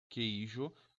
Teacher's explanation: Esse ei é um ditongo com vogal, semivogal, formato VS, então ditongo decrescente. E não tem o tio aqui por cima, então ditongo decrescente oral.